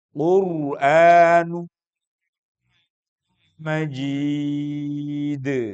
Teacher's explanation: Tanwin atau nun mati bertemu dengan mim. Idgham bighunah. Idgham itu menyatukan bighunah dengan suara dengung.